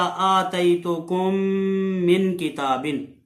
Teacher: اسی طرح آتیتکم من کتاب، आतैतुकुम के आखिर में मीम साकिन है और आगे मिन किताबिन, मिन जो लफ्ज है इसके शुरू में मीम है, तो ये पहली मीम साकिन को दूसरी मीम में मुदगम करके इदगाम करके गुन्ने के साथ पढ़ेंगे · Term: इदगाम शफवी